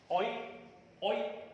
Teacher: this is a glide from back open rounded vowel just below half open position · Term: diphthong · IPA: /ɔɪ/